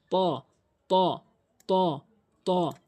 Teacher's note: জিহ্বার আগা সামনে দুইটি দাঁতের গোড়াতে লাগিয়ে উচ্চারণ করতে হয়।